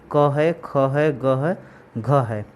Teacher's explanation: आपका root of tongue जो है पीछे जाता है, पीछे जाने के बाद जो है आपका जो सॉफ्ट पैलेट है उसके पास जो स्पर्श करता है